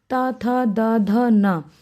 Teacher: जो हमारी जीवा है वो हमारी दांतों से टकराती है